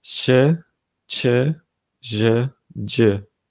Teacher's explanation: che ressemble pas mal au che allemand, sauf que la langue, au lieu d'être en bas, est un peu plus relevée, enfin la pointe de la langue est plus relevée vers le haut. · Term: consonnes alvéolo-palatales